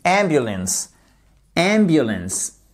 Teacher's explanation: L'accentuation se fait sur ces deux premières lettres qui forment la first syllable. So I would like you to stress that first syllable.